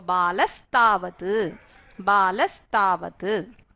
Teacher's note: So Visarga will get replaced with Sakara. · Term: Sakaradesha